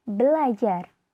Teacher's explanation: Mestinya kalau tidak ada perubahan menjadi berajar, tetapi karena ada dua bunyi R, maka R yang pertama diperbedakan atau didisimilasikan menjadi L, sehingga menjadi belajar. Karena perubahan tersebut sudah menembus batas fonem, yakni R merupakan alofon dari fonem R dan L merupakan alofon dari fonem L, maka disebut dengan disimilasi fonemis.